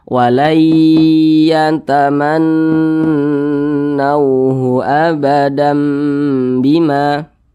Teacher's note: Gunnah musyaddadah itu bacanya didengungkan 2 harokat atau kira-kira 2 ketukan. Tapi kalau untuk gunnah musyaddadah itu boleh didengungkan hingga 3 ketukan atau 3 harokat itu boleh.